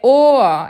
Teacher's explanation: Tem gente que pronuncia or, tem gente que pronuncia or. É Ohr, é como se tivesse um azinho no final